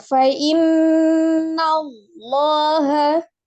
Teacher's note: tidak merubah huruf lamnya menjadi huruf wau ya ee tempatkan ke makhraj huruf lamnya e bukan wau jadi tidak dimonyongkan